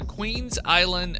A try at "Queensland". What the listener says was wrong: Queensland. You did. I don't know where you got the I, but